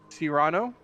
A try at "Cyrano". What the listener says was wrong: Cyrano. Cyrano. No pausing on any syllables. Just Cyrano.